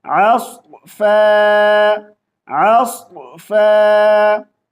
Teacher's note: सौद को मोटी आवाज से पढ़ना है मगर सौद के ऊपर कलकला नहीं करेंगे